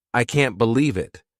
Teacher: notice how their voice goes up to show surprise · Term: intonation